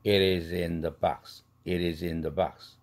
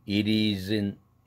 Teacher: the box 할 때 the가 오면 또 the가 또 날아가면서 n 사운드로 동화되죠